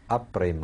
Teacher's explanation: En Orient, on ne sait pas ce que c'est qu'un F. On le prononce toujours P.